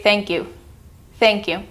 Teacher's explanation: Do you see how when you put the word thank and you together, it kind of reduces the K sound?